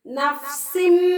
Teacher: உடனே சொல்லிடுங்க, இது இக்லாபுடைய சட்டம். தன்வீனுக்கு பின்னால இக்லாபுடைய பா வந்திருக்கிறதால தன்வீனில் உள்ள நூனை மீமாக மாத்தி குன்னா செஞ்சு ஓத வேண்டும்.